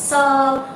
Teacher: जो दंती स होता है, जिन्हें गुजराती में આપણે સગડીનો સ કહીએ છે, उसको 2 दांतों से बोला जाता है